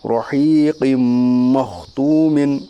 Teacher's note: را متحرک کے اوپر زبر، اس لیے را متحرک پر پڑی جائے گی، یا ساکن سے پہلے زیر ہے اس لیے یا مدہ ہوگا، یا مدہ کو ایک الف کے برابر کھینچ کر پڑھیے۔ قاف کے نیچے دو زیر کی تنوین ہے، دو زیر کی تنوین کے بعد حروف یومن کے 4 حرفوں میں سے میم ہے، اس لیے ادغام ناقص ہوگا، یعنی ملا کر غنہ کے ساتھ پڑھیے۔